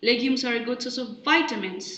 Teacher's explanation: the pitch contour it steadily rises towards the end